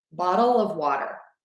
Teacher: Or I'm going to use a D, which is that flap T there. Bottle of, again, I'm using the schwa with a V.